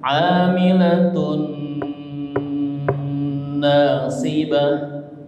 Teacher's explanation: Tanwinnya melebur ke huruf nun ya. Ditahan digunahkan. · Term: idgham bigunah, idgham bigunnah